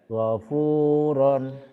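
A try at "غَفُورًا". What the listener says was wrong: Ron Pak ya, bukan run. Huruf Jawa, huruf O Pak ya. Ghafuron.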